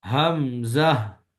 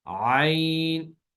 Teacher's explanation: زیادہ مشکل ہوتی ہے جب کلام کے اندر عین اور حمزہ کو پڑھا جاتا ہے. تو حمزہ کو جھٹکے سے پڑھتے ہیں جبکہ عین کو گلا گھونٹ کر دبی ہوئی آواز میں